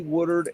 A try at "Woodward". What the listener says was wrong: Woodward. What did you call it? Woodward. Sound like you said something like Woodard. Woodard.